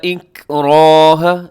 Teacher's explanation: اس میں را کے اوپر زبر ہے، را موٹی پڑے گا، ساتھ الف ہے، الف بھی موٹی پڑی جائے گی۔ الف کا قانون یہ ہے کہ الف سے پہلے موٹا حرف ہو تو الف بھی موٹی پڑی جاتی ہے، الف سے پہلے باریک ہو تو الف بھی باریک ہو جاتا ہے، اس کی اپنی کوئی مرضی نہیں ہوتی۔